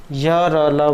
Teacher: जिन वर्णों के उच्चारण में जिह्वा से न तो संपूर्ण स्पर्श होता है और न ही स्वरों के उच्चारण के समान पृथक्य होता है, तो उन्हें अर्धस्वर कहा गया है।